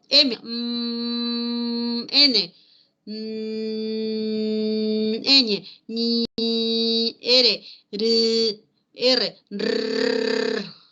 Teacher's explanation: M. N. Ñ. R. R. Vibran también las cuerdas vocales